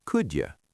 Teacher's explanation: When a word ending in a D sound meets a word starting with a Y sound, they crash together and make a J sound. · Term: connected speech